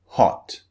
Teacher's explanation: the shape of the mouth is slightly rounded not very rounded but slightly rounded